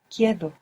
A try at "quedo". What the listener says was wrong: The E doesn't split here, but good for trying.